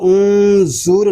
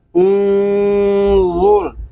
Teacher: آگے حمزہ نون پیش ان، را پیش غر، انظر، وا یہ حروف مستعلیہ میں سے ہے، اس کو پر پڑھیں گے اور نرمی کے ساتھ پڑھیں گے، اس میں سختی نہیں کریں گے، اس کو انظر نہیں پڑھیں گے بلکہ انظر اس طرح پڑھیں گے۔